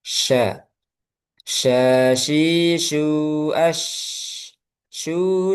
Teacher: punya sifat menyebar udaranya di mulut namanya tafasyi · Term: tafashi